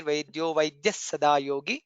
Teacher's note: The additional Sakara, half Sakara comes there.